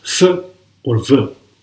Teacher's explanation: That produces the sounds p, b, m, and w. And labiodental by using lips and teeth to produce the sounds f or v